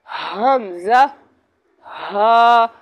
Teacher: हमज़ा हा हल्क के नीचे वाले हिस्से से अदा होता है। अब यह हमारा हल्क है, ये नीचे वाला हिस्सा जो है, ये हल्क का नीचे वाला हिस्सा है, यहाँ से अदा होता है।